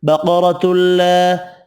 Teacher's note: را زبر کی وجہ سے پر پڑھنا ہے